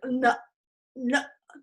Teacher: You know, that is my unreleased T, all right? If I had the closure at my vocal folds, like nut, nut, that would be a glottal stop.